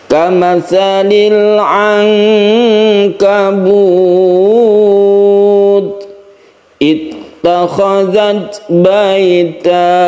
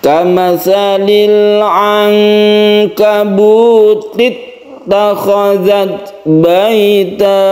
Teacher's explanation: Maksudnya adalah hamzah tidak dibaca kalau wasol. Jadi i ini tidak dibaca, kita langsungkan ke tasydid ta. Kamatsalil 'ankabutit takhazat baita, bukan angkabuti ittakhadat, tapi langsung taknya ini ke tasydid ta. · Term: hamzah wasol